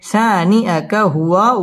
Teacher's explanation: ওয়াও ঠোঁট গোল করে উচ্চারণ করতে হবে।